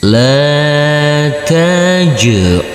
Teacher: huruf Jim yang bersukun ini kita pantulkan karena ini adalah bacaan qolqola